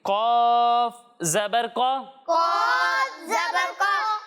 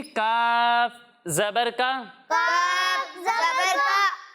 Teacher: جب ہم قوف کی ادائیگی کریں گے تو اسے موٹا کر کے پڑھیں گے کیونکہ قوف حروف مستعلیہ میں سے ہے، اور جب ہم کاف کی ادائیگی کریں گے تو اسے باریک پڑھیں گے